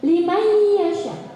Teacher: Ada nun mati bertemu dengan ya. Cara bacanya dimasukkan dan diberikan dengung sebanyak 2-3. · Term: idgham